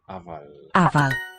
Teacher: the single F in Welsh is pronounced as a V, as a voiced.